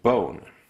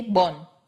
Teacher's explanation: the issue with the vowel in bone is that it's actually two vowels you start at o which is where you want to be